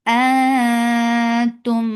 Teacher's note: and this is ikhfa, so keep the sound in your nose. And you prepare your tongue to say letter ta.